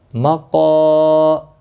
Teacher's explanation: قاف موٹا پڑا جاتا ہے، مستعلیہ ہے